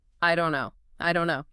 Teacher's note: Native speakers hate stopping. So the T drops, the vowels blur, and the entire three-word phrase collapses into two syllables.